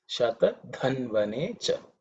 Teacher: This dha is the fourth letter in the tha varga, so it has to be aspirated.